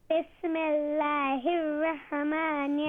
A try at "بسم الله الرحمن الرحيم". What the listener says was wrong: No, you're saying Raha. You're reading Raha. You're making qalqala on the ha. There is no qalqala. Bismillahir Rahmanir Rahim.